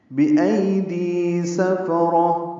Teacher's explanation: ای یا لین معروف طریقے سے پڑھیں گے. دی یا مدہ ہے 2 حرکات لمبا کریں گے. سفرہ میں سین فا جلدی پڑھیں گے، را پر پڑھیں گے.